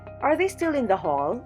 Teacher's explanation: The voice starts with a normal pitch, then goes up on the accented syllable, and remains up till the end of the sentence. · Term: rising intonation